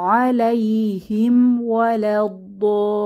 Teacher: হিম বলতে দুই ঠোঁট মিলে গিয়ে যতটুক সময় লাগে অতটুকুই, এর বেশি সময় আমাদের যাতে ধরে না রাখি